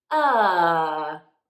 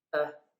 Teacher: first one is relaxed but more open ah whereas the second one is relaxed but more closed uh almost doing nothing